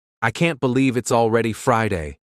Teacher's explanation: the final word Friday is quick but clear and also how the speaker kind of drops the T in can't making it sound more like K · notice how the word already is stressed and how the final word Friday is quick but clear